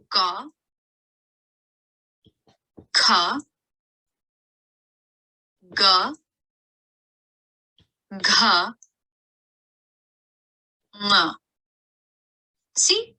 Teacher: the second and fourth letters that i pronounced had a little bit more energy and strength behind them than the first two letters